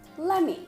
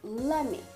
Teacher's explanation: instead of using the T sound, of course, let and me will be combined and it comes out like lemme